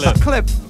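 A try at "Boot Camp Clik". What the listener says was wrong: You said clip, but it's click. Click.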